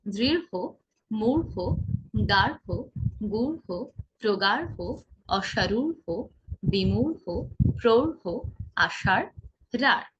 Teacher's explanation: রহের ক্ষেত্রে কি হবে, অনেকটা হয়ের মতো উচ্চারণ হবে শেষে।